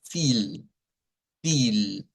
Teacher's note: Hay que hacer esa I como sostenida. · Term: I larga